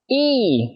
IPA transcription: i: